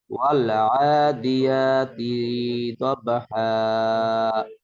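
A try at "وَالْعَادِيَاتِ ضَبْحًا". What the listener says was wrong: তিটা টান নাই, টান নাই। ওয়াল আদিয়াতি দবহা।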